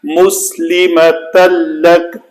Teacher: تنوین کے بعد لام ہے تو ادغام کامل ہوا۔ مُسْلِمَةً لَكَ، تن جو نون ہے بالکل ختم ہو گیا۔